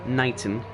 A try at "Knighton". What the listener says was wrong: Knighton. You pronounce the K.